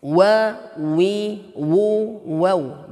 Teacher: Jadi apapun keadaan harokatnya, dia tetap memajukan bibirnya. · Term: huruf waw